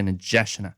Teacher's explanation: The D is a really soft D sound. It's like a J sound in English.